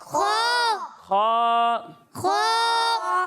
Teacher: اسے موٹا پڑھنا ہے لیکن گول نہیں کرنا ہے اسے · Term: حروف مستعلیہ